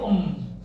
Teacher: Ketika kita menyebut em, maka getaran di hidung kerasa. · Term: guna